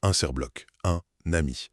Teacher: La consonne finale, normalement muette se réveille et on entend un serbloc, un ami. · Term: la liaison